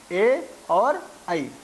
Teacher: ए दौतौ कंठ तालु, यहाँ पर 2 स्थानों को मिला करके जो वर्ण बोले जाते हैं उनका संकेत किया जाता है कि कंठ और तालु के माध्यम से जिन वर्णों का उच्चारण किया जाता है वे हैं ए और ऐ। तो इस प्रकार से ये 2 जो स्वर वर्ण हैं उनका उच्चारण स्थान कंठ और तालु के माध्यम से किया जाता है। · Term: कंठ तालव्य वर्ण